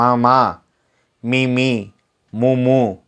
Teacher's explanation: மா சொல்லி பாருங்க மூக்குல இருந்து சவுண்ட் வரும் · மெல்லினம் வந்து மூக்கிலிருந்து பறக்குது